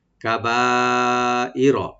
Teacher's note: কাবাইর, ই বলবো যেন হামজা স্পষ্ট হয়, ইয়া যেন না হয়, রাটাকে আমরা ডিপ করব, ডিপ করে পড়বো, রাতে কোনো টান নাই